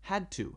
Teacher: Had to, D and T are not the same, right? But it sounds almost the same, so we can put the two sounds together.